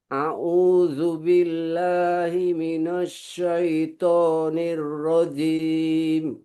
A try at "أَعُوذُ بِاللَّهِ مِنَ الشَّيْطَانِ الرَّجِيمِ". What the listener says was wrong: Mm, ada sin dan jim. jangan jangan berubah bentuk mulutnya sampai dia pindah ke huruf berikutnya. Coba kata himinas, tahan kalau dia ke atas tidak lurus, dia susah turunnya. himinas tahan, himinas syaiton.